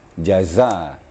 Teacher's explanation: jazaan itu harus agak keras bacaannya ya desisnya lebih keras jadi dipertemukan ujung lidah dengan ujung gigi kedua-duanya gigi dirapatkan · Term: Zai